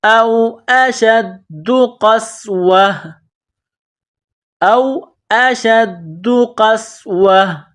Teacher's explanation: او اشد، او اشد قسوہ، یہ نقطہ والا قاف ہے، اس کو موٹا کرنا ہے، قاف کو سین کے ساتھ ملانا ہے، سین کو باریک کرنا ہے، سین میں سیٹی کی آواز پیدا کرنی ہے